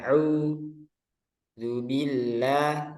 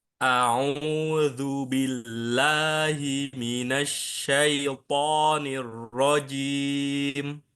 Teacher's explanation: itmamul harokat pada fathah itu bunyinya a. Nah, bukan u tapi a